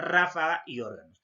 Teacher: la mayor fuerza de voz en la ante penúltima sílaba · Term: esdrújulas